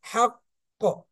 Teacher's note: এখানে আমরা হাকটা ধরে রাখবো, রেখে একটু পরে ধাক্কাটা দিব। হাক ক, সঙ্গে সঙ্গে দিব না হাক ক, এরকম দিব না হাক ক, একটু ধরে রেখে 1 সেকেন্ড মতো হাক ক, ঠিক আছে। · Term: কলকলা